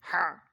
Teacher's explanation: এই দুইটা হরফ পড়তে খুবই কঠিন একটু কষ্ট করে পড়তে হয় হলকের মধ্যখান হইতে এই শোষো করে পড়তে হয় মুখ দিয়ে বাতাস বাইরে আর নিচের দিকে চাপ দিতে হবে হলকের